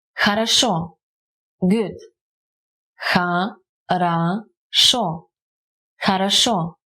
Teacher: The first two O's aren't stressed, and they are pronounced as A, while the last one stays O, because it's stressed.